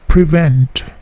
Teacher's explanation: Bunyi T-nya juga memantul